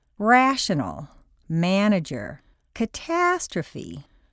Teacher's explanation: in a stressed syllable a sounds like aah